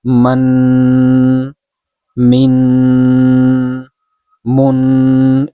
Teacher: And in tanween, we do ghunnah or ikhfa. Ikhfa or ghunnah is hiding the voice of meem and noon partially in the nose